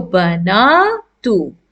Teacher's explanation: Here noon has a long vowel with the fatha coming with it.